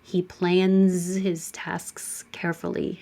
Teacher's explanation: N is the final sound, and it's voiced. So leave your voicing on, and it's a Z.